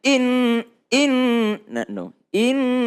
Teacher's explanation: nun dan mim tasdid jangan pakai tekanan tapi dia tetap berdengung